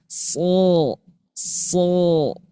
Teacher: Si ujung lidah nempel ke bawah, pangkal lidahnya ke atas. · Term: tebal